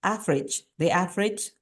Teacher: No, we don't say average. There will be 3 syllables, but actually this is only normally spoken with 2 syllables in normal daily speaking.